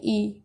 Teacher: बड़ी ई तो जीभ का आगे वाला भाग ही ऊपर नीचे हो रहा होगा तो ये इसलिए अग्र भाग में आएगा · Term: अग्र स्वर